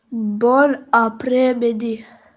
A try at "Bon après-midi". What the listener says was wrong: So you need to work on après. Okay. So can you try saying it from your throat? Bon après midi.